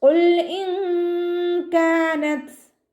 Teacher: നൂനിൻ്റെ സൗണ്ടിനെ വ്യക്തമായിട്ട് കേൾപ്പിക്കാത്ത രൂപത്തിൽ ഉച്ചരിക്കുക കേട്ടോ. ത സുക്കൂനാവുമ്പോൾ കുറച്ച് എയർ പുറത്തോട്ട് പോണ സൗണ്ട് കൊടുക്കുക കേട്ടോ